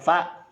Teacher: Fa itu bibir bawah ketemu gigi atas. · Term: huruf fa